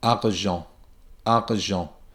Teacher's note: I get ah and then the R sound without the tongue moving back and forth in the mouth.